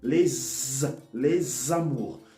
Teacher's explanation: So that S, it has the sound of a Z.